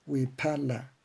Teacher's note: la elevación de la voz es siempre en la grave y llana la penúltima sílaba